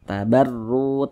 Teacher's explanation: dibaca tebal karena huruf ra memiliki tanda baca dhammah sehingga pangkal lisan kita naik terangkat ke atas. Ketika kita mengucapkannya, huruf ra-nya kita tebalkan. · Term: tabkhim